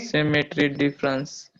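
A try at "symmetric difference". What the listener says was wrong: सिमेट्रिक not सिमेट्री, okay, सिमेट्रिक डिफरेंस क्या बोलेंगे बेटा, सिमेट्रिक डिफरेंस बोलेंगे।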